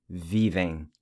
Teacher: the ‘’e-m’’ pronounced with a nasal ‘’ẽj̃’’ sound